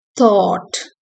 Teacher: The vowel is long, giving it a sustained quality, and it is commonly found in words like thought and law in British English.